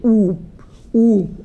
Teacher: ऐसे वर्ड जिनको बोलने में ओठ जो है आपके स्पर्श हो जाते हैं। तो आप बोल के देखिए ऊप देखें तो ओठ में आप देख रहे हैं कि मूवमेंट हो रहा है। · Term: ओष्ठ वर्ण